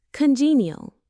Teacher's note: It has 3 syllables, con-gene, neal. The stress is on the second syllable, gene.